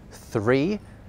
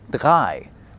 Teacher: where English developed a th sound in certain words, German went off in a slightly different direction and ended up with a d sound instead.